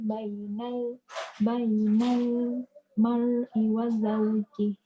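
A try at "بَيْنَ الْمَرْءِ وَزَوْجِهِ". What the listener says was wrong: Ra tebal sikit. Bainal mar'i wa zawjih.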